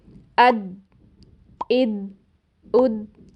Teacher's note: جب ہم ادنیٰ حافہ یعنی زبان کے اگلے کناروں کو بھی پریشر دیتے ہیں، تو ہمیں پھر ضاد کی بجائے دال کی آواز سنائی دیتی ہے، جیسے اد، اد، اد، حالانکہ یہ آواز کیسی ہونی چاہیے؟